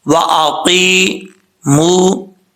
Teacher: یا مدہ ہے، ایک الف کی مقدار، اس کو لمبا کر کے پڑھیں گے